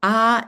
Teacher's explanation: ah is an open vowel at the bottom of the vowel progression